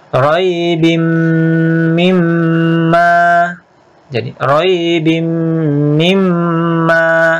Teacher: tanwin kasratain ketemu mim, itu idgham bi gunnah